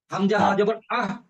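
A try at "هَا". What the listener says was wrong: মাশাআল্লাহ।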